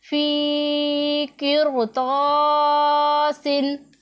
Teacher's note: را ساکن ہے، اس سے پہلے زیر اصلی ہے اور اس کے بعد را ساکن کے بعد حروف مستعلیہ میں سے حرف آ رہا ہے، اسی لیے ہم نے اسے موٹا پڑھنا ہے۔